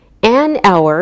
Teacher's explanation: We say an hour because we don't pronounce the H, so it sounds like a vowel sound.